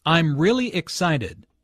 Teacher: Notice the emphasis on “really.”